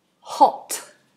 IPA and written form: hɒt (Hot)